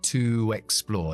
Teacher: Pero como viene una vocal, me viene mejor dejarlo en u, que es la hermana de la W, la W, para enlazar con la E. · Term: intrusión de W